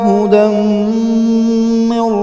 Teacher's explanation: تنوین کے بعد حروف یرملون میں سے میم آ رہا ہے، ادغام مع الغنہ کریں گے